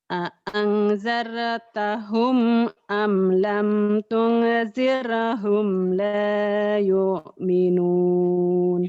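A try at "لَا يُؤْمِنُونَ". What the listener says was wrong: yuknya kurang tekan. Layu, layu. Yuknya kurang kurang mantap. Kurang. Kurang. Ya, ketakutan karena dilarang akhirnya nggak ada. Jadi yang butuhkan yang tengah-tengah kata Nabi.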